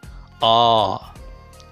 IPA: a: